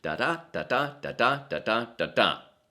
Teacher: We all pretty much know by now that Shakespeare wrote his verse plays in iambic pentameter, lines which featured 5 sets of iambs. An iamb being formed by an unstressed syllable followed by a stressed syllable